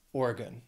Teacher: That last syllable sounds like gun because it's unstressed